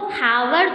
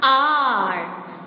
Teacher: H is a silent over here, so word is pronounced as आर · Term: म्यूट एच